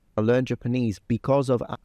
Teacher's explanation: the voice is activated over the s in because